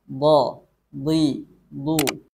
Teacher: Makharijul huruf dhad yakni adalah tepi lidah mengarah ke geraham gigi geraham.